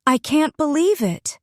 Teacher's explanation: if you say it with rising and falling intonation, it feels emotional.